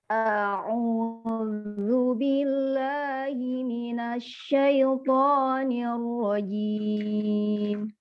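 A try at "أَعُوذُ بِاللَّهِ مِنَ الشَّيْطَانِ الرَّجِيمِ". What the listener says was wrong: Oke, ainnya kurang ditekan, Bu. Jangan dua-duanya ain, dibuka baru au.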